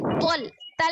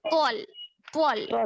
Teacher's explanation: मोटा पढ़ना है क्योंकि त्वा हुरूफ मुस्तालिया में से है, मोटा पढ़े जाने वाले हुरूफ में से, साद और त्वा दोनों, और क़ाफ भी आगे आ रहा है।